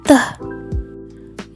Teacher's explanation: bunyi telah dihasilkan karena terjadinya pertemuan antara ujung lidah dengan pangkal gigi lalu bunyinya meletup Oleh karena itu bunyi the disebut sebagai alveolar plosif lalu yang